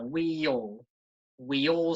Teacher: it's like there's a Y in the middle of those two words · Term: Y sound